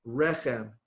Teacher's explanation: accent on the first syllable